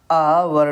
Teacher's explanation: छह है हमारा निम्न में से कौन सा विवृत स्वर है विवृत स्वर मतलब जिसके बोलने से हमारा मुंह खुला रहता है